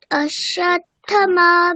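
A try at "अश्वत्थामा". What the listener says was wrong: অশ্বত্থামা আকার আছে না? অশ্বত্থামা আকার, দুটো আকার, থামা দুটোই আকার, তাহলে দুটোকে একটু টানবো আমরা। অশ্বত্থামা।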